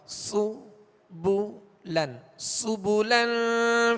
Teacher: ہونٹوں کو کامل گول کریں گے تو پیش معروف ادا ہوں گے